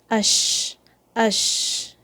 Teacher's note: sheen has a spreading sound it also comes from the middle of the tongue and the roof of your mouth and there's some air that is released when you say Sheen